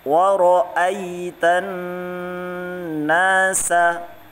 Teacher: Jadi nunnya ditahan ya, 2 atau 3 ketukan ya.